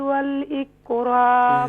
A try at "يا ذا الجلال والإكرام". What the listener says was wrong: ذال کو صحیح طور پر ادا کریں. یا ذا الجلال والإکرام.